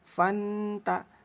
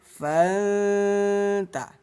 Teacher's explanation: Nun sukun bertemu tak disebutnya ikhfa, dibaca samar.